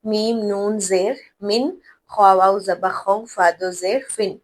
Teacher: گنگناہٹ کی آواز نہیں، غنہ نہیں ہوگا، بلکہ نون کو ظاہر کر کے پڑھا جائے گا